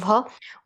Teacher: ओष्ठय महाप्राण घोष व्यंजन वर्ण का उदाहरण है